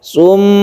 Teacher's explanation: Sebelumnya ada tasydid mim, ini adalah gunnah musyaddadah, kita tahan.